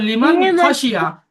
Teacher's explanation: তানবিন এবং নুন সাকিনের আওয়াজকে বিনা গুন্না জাহির করে পড়তে হবে। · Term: ইজহার